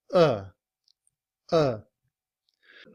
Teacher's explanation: In reduced form, we don't say a. We would use the sound of the schwa, which is the upside down e.